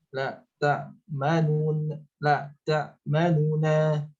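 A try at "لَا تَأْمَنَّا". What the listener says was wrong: Lebih cepat lagi nunya. La ta'manuna. Terus yang dengan ismam. Nah, dengan ismam kemarin teorinya pertama sukun dulu. La ta'man. Setelah sukun man, kemudian tarik monyongnya, baru baca harokat fathah. La ta'manna.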